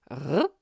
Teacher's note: La roulée uvulaire est le R, grasseyé